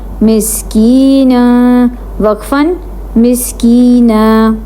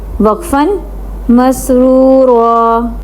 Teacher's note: جب وقف کرتے ہیں دو زبر والی تنوین پہ تو اس کا الف پڑھتے ہیں